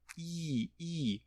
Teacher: é uma vogal em que a língua está muito elevada, i. Isso ajuda a manter a nasalidade.